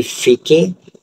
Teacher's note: gesaran tidak bersuara yang melibatkan bibir dan juga gigi juga